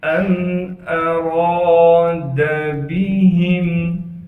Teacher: را کو موٹا کر کے پڑھیں گے اس لیے کہ را پر زبر ہے، را کے بعد الف مدہ ہونے کی وجہ سے را کو ایک الف کی مقدار کھینچیں گے، دال کو بغیر کھینچے پڑھنا ہے، با کو بھی بغیر کھینچے پڑھیں گے